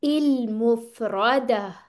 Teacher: और इल नहीं करना ये हमजा ठीक है हमजा की साउंड आनी चाहिए